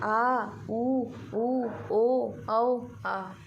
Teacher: जब हम लोग बोलेंगे आ, इसको हम लोग आगे से तो बोल नहीं सकते, इसलिए जहाँ से जीभ स्टार्ट हुई है एकदम पीछे वाला भाग वहाँ से आवाज़ निकलती है, तो उससे जिह्वा का पश्च भाग प्रभावित होता है। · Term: पश्च स्वर